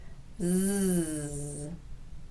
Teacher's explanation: For the z sound, the front part of your tongue raises up and gets really close to that bony ridge on the roof of your mouth, but it doesn't actually touch it.